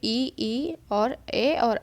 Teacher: जिन स्वरों के उच्चारण में जिह्वा का अग्र भाग सक्रिय रहता है उन्हें अग्रस्वर कहते हैं। अग्रस्वर है ये ई और ए होता है, याद रखेंगे, दोनों ई और दोनों ए।